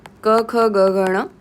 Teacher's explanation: सबसे पहले तो कंठ यानी कि नेक अर्थात अकार जैसे कि अ आ फिर क वर्ग क, ख, ग, घण और विसर्ग का उच्चारण स्थान कंठ होता है। तो कंठ के उच्चारण कंठ से उच्चारण किए गए वर्ण कंठ्य कहलाते हैं।